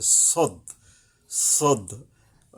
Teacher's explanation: কিন্তু খুব কাছাকাছি সদের উপর আচ্ছা আগে সদটা হলো এরকমের যে আপনাকে জিহ্বার আগা সামনের নিচের দাঁতের আগা থেকে শীষ সহ মোটা ভাবে আদায় হবে সদ অর্থাৎ জিহ্বার আগাটা আইসা দাঁতের নিচের যে দুইটা বড় দাঁত